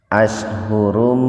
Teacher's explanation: domatain ketemu dengan mim, jadi membacanya diidghamkan, dimasukkan ke mim, bigunna dengan mendengung. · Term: idgham bigunna